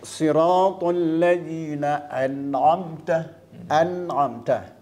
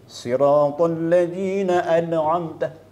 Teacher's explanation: kita baca maknanya dengan nyata terang dan nyata tanpa dengung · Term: izhar